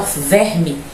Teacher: como se tivesse um I ao final e não E, porque esse E vai ser átono